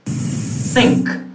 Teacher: Velum is up, there is no vibration. · the blade of the tongue is touching the upper teeth, not the alveolar ridge, the upper teeth. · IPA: /θ/